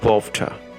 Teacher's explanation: Now the Britons say it as water, totally swallowing the R and introducing the W sound before the T